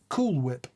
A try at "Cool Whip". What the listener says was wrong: Cool Whip. Why are you pronouncing the H? Whip.